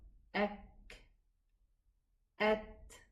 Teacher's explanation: the kaf and the ta, if they are sukoon, they are going to have a whispering sound.